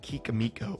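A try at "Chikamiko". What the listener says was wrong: I have it in one of the videos, but it's not Kikamiko. It's pronounced with like a C almost at the beginning of it.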